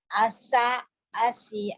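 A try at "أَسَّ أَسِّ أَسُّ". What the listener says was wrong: kurang double tuh udah bener nih, lihat mulut, lihat mulutnya Bu. Asa, asi, asu, dua. Pelan-pelan aja dulu. Asa, asi, asu. asa, asi, asu.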